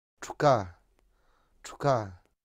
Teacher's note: you can hear how the vowel was whispered. It was completely devoiced.